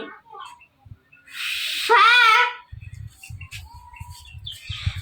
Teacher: হরফটি পাতলা হবে নরম করে উচ্চারণ করতে হবে ফা হরফ এক আলিফ টেনে পড়তে হবে